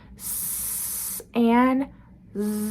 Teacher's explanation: Same mouth placement, same airflow, different voicing.